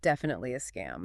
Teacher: We often signal sarcasm, or that something is obvious, by dropping our pitch way down at the end of a sentence. A low, flat tone. · That gets to the stress, definitely. But then on the word scam, the voice just, it drops into the basement